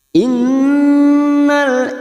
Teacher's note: Nun yang bertasdid gunna musaddadah kita tekan selama tiga harakat kita dengungkan